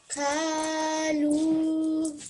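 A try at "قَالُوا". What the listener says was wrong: I want you to say it in a thick sound. So the way you've said it is qalu like this. But I want you to say qalu like this.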